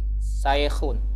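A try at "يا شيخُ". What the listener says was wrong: Shin, sha, sha, syaikhun.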